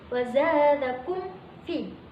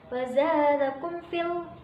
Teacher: ada bacaan idhar syafawi sebab mim sukun bertemu fa. Cara bacanya jelas.